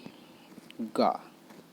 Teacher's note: उच्चारण में जिह्वा का पश्च भाग कोमल ताल से स्पर्श करता है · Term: कोमल तालव्य